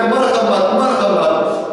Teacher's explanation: ہاں کا جو مخرج ہے وہ گلا ہے، گلے سے نکلتا ہے